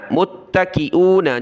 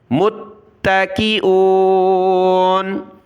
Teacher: ارائیکی، حمزہ زیر ای، کاف زیر کی، ای کی، ارائیکی، متکئون، میم تا پیش متا زبر تا، متا، تا کو سخت کیا تشدید کی وجہ سے